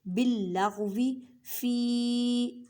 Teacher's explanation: یا ساکن سے پہلے زیر ہے تو یا مدہ کا قاعدہ کریں مینس کے 4 الف کی مقدار میں کھینچ کر پڑھیں